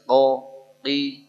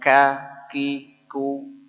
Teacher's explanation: huruf q itu keluar pada pangkal lidah ya pangkal lidah jadi bagian lidah paling belakang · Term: huruf qaf